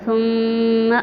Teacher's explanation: اور جو pink colour والے ہیں، پنک کلر میں ہم نے غنہ کرنا ہے، ثم آواز ہماری ناک میں چلی جائے گی